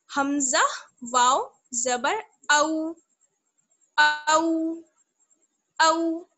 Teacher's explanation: वाउलीन को हम नरमी के साथ बिना झटके के और मारूफ आवाज में पढ़ते हैं